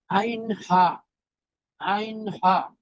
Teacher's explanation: 1 নং মাখরাজ হলকের শুরু হতে হামজা হা। 2 নং মাখরাজ হলকের মধ্যখান হতে